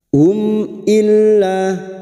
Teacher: mim sukun yang bertemu dengan huruf hijaiah selain mim dan ba namanya bacaan izhar syafawi mim sukun dibaca jelas tanpa mendengung